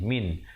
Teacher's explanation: Nun mati bertemu ha, sempurnakan saja min tanpa dipanjangkan terus masuk. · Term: izhar halqi